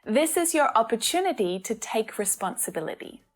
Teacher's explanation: the last syllable in all of these words is unstressed but it is clearly there